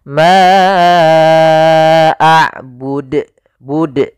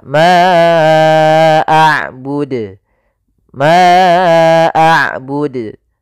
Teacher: harusnya tidak ditambahkan Hamzah mabud Ma AUD ya bukan Bud tapi maud tidak ada hamzahnya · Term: Qalqalah